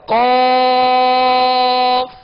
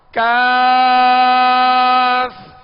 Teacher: دو نقطے والا جو ہے حروف مستعلیہ میں سے ہے، اس کو پر پڑھیں گے، اور آگے جو دوسرا کاف ہے ڈنڈی والا اس کو باریک پڑھیں گے